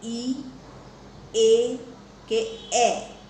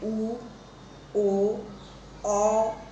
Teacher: ઈ, એ કે એ એવું બોલીએ છીએ ત્યારે જુઓ, આપણી જે જીભ છે એ મોઢામાં આગળના ભાગે રહે છે. જ્યારે ઉ, ઓ, અ એ જ્યારે આપણે ઉચ્ચારીએ છીએ ત્યારે આપણી જીભ મુખમાં પાછળના ભાગે રહે છે.